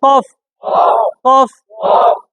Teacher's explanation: এটা জিহ্বার গোড়া থেকে ঠাস ঠাস করে বলেন